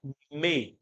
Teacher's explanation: É a sonoridade. E o me também tem um pouquinho de nasalidade.